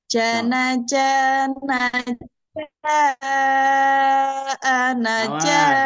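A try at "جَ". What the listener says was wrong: jangan terlu panjang ja ah awas tiga ketukan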